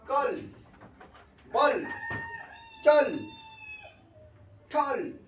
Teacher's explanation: জিভের অগ্রভাগটা উপরে ঠেকে আছে, উপরের তালুতে ঠেকে থাকবে, ঠিক ভিতরের দাঁতের গোড়ার কাছে, অর্থাৎ মাড়িতে, তখনই হচ্ছে সেটা ডার্ক এল। · ডার্ক এল কোনটা, ডার্কেল যে ওয়ার্ড সেটা বোঝাচ্ছে যখন এলটা উচ্চারণ হবে টাং টিপ, অর্থাৎ জিহ্বার অগ্রভাগটা উপরের ভিতরের দাঁতের গোড়ায় করে, অর্থাৎ তালুর উপরে করে। ঠিক আছে, উপরের মাড়ির ভিতরে দাঁতের গোড়ায় জিভের অগ্রভাগটা ঠেকে থাকবে, ঠিক তালুর উপরে করে। ওকে, তালুর উপরে দাঁতের অগ্রভাগে অর্থাৎ তালুর উপরে দাঁতের ভিতরে মাড়ির কাছে জিভটা ঠেকে থাকবে বা উপরে তালুতে জিভ ঠেকে থাকবে, তখনই হচ্ছে ডার্ক এল।